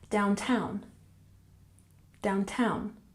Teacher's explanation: here we have the primary stress on the second syllable downtown